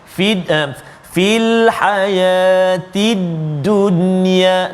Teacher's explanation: izhar mutlaq, nun mati bertemu dengan ya dalam satu kalimah